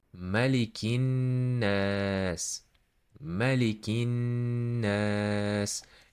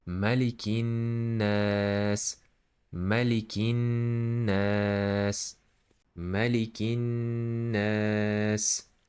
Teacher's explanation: I'm holding the voice of this nun and stretching the a.